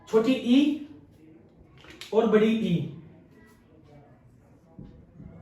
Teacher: तालव्य स्वर ऐसे स्वर जो हमारे तालु से बोले जाते हैं।